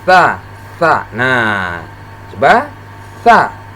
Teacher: Huruf sa tempat keluarnya ujung lidah, ya, dengan ujung dua gigi seri yang atas. Jadi ujung lidah bertemu dengan dua gigi seri yang paling atas.